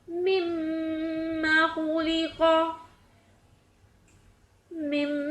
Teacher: میم متحرک کو میم مشدد سے ملاتے ہوئے آواز لمبی ہوگی اور ادغام شفوی ہوگا۔